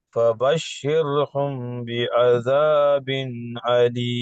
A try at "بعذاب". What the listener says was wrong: கொஞ்சம் ஐன் வரட்டும். بعذاب أليم. آ بعذاب أليم.